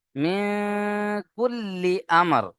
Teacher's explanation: আমরা নুন সাকিনকে নাকের মধ্যে তুলে এক আলিফ গণনা করে পড়বো